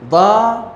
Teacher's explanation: ذات کے بعد الف آیا تو 2 حرکت کے برابر، چونکہ ذات کے اوپر فتح ہے، ضا 2 حرکت ہو گیا.